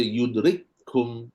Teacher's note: bila dah baca serentak, maka kaf pertama dah tak bunyi dah, hams tak bunyi dah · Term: idgham mutamathilain